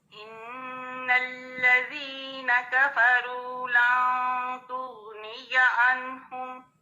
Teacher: اس کو تغنیہ نہیں پڑھنا, غین کو ہلا کے نہیں پڑھنا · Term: غین ساکن